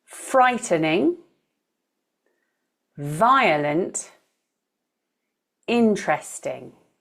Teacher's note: three syllable words with the first syllable stressed